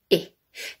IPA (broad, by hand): ɪ